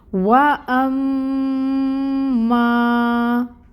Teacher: آگے آ رہا ہے حمزہ کو محقق ادا کریں گے اور اس کی بھی حرکت 1 کاؤنٹ ہی ادا ہوگی۔ میم مشدد ہے، میم مشدد پہ غنہ 2 کاؤنٹس کے برابر، اور یہاں پر الف ساکن اور الف ساکن سے پہلے فتحہ کی حرکت میم کے اوپر، تو یہاں پہ الف مد کا رول ہو رہا ہے۔ · میم مشدد ہے، میم مشدد پہ غنہ 2 کاؤنٹس کے برابر، اور یہاں پر الف ساکن اور الف ساکن سے پہلے فتحہ کی حرکت میم کے اوپر، تو یہاں پہ الف مد کا رول ہو رہا ہے۔ 2 حرکت برابر ہم ماں کو لمبا کھینچیں گے۔